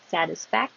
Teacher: Don't have to release the K. Satisfact. Your tongue goes up to the K position, and then the sh.